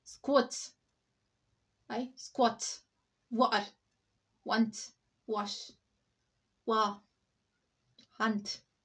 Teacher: Short o is replaced by a.